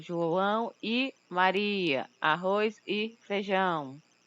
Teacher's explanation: a letra Ezinha, ela vai ter a pronúncia de I quando esta for utilizada como um conectivo ou conjunção em si